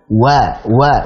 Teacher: Jadi wa yang pertama keluarkan dari asy-syafatain dan fathahnya keluarkan dari al-jawf dulu. Wa, bukan wa langsung, tapi la wa.